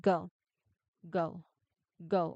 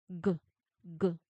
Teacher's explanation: There are vibrations, right? So if there are vibrations, then that is a voiced sound.